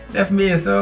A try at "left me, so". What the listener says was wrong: You pronounce it correctly, but the intonation. It's left me, so? Left me, so?